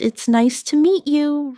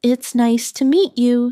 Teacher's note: stress nice and meet to make it sound warmer.